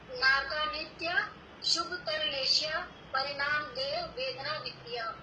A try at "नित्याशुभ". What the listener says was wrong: हाँ ये नित्याशुभ एक साथ बोलना है, वरना क्या होता है कि फिर हम उसको अशुभ है शब्द एक्चुअल में, और हम वो शुभ समझने लग जाएंगे।